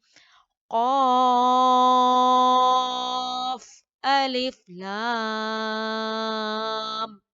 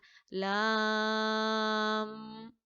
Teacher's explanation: इसको खूब आपने क्लियर करके पढ़ना है, जारी नहीं करना यहाँ पे आवाज को। कैसे पढ़ेंगे, 6 बीट्स प्रोलॉन्ग करते हुए काफ और लाम को पढ़ते हैं।